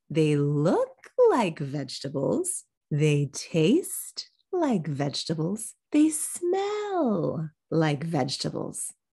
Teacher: we've got a combination of contrast and de-accenting this happens a lot because we already mentioned vegetables so it's